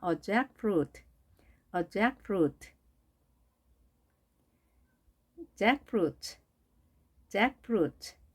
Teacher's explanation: 마치 잭이라고 하는 사람 이름과 프루트, 과일이 합쳐진 단어 같죠? 따라서 잭에 강세가 있고 제1강세가 있고 프루트가 제2강세가 있습니다.